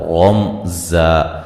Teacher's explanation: لا الف مدہ ہے، رمزا، را کو موٹا ادا کریں گے، میم ساکن کا یہاں اظہار ہے، غنہ نہیں کریں گے ، ملانے کی صورت میں رمزا، یہ ادغام مع الغنہ ہوگا،